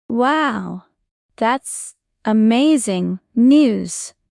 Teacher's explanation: In wow, that's amazing news, your voice should go up on amazing. Practice smiling while you say it.